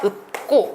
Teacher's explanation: 피읍의 대표음인 비읍으로 바뀌어서 읍고 이렇게 하셔야 됩니다